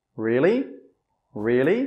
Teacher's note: if you're making a one-word question, your intonation should go up.